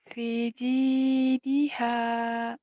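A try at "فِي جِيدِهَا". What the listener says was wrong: V-nya panjang, ada yang berdiri tuh, panjang.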